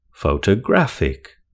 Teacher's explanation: Photographic has four syllables with the stress on the third syllable.